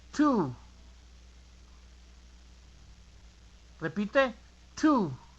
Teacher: la T en inglés es diciendo la T, pero de una forma que soples aire hacia afuera